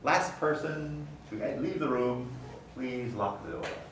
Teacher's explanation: the t at the end of last is between a fricative and a another consonant so we don't pronounce the t